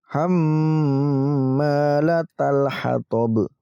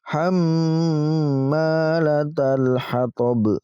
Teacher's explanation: Huruf ha ini namanya huruf qamariyah. Maka ketika ada alif lam qamariyah kita baca dengan jelas huruf lam sukunnya.